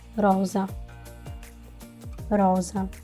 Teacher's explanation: the second sound that the S can make which is more close to a z sound